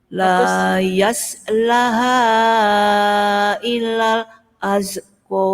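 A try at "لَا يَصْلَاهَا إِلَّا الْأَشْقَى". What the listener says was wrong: Apa yang kurang panjang? Lanya. Jadi harus tebal.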